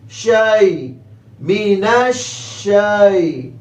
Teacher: میم کے نیچے زیر لمبا نہیں کریں گے، نون کو شین کے ساتھ ملائیں گے، شین کی آواز پورے منہ میں پھیلے گی، مینش مینش، اور شین کو یا سے ملائیں گے، یا لین ہے، نرمی سے ملانا ہے، جلدی سے پڑھنا ہے